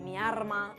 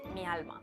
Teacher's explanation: Otra cosa característica es que la L pasa a R. Se confunde la R con la L cuando está a final de sílaba.